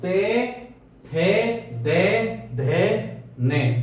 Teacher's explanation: जो दांतों से बोले जाते हैं, यानी कि तय वर्ग